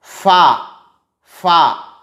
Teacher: فا کا مخرج ہے ثنایا علیاء کا کنارہ اور نیچے کے ہونٹ کا پیٹ۔